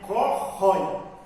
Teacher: Eu tenho uma vogal, uma semivogal e o timbre é aberto. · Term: ditongo aberto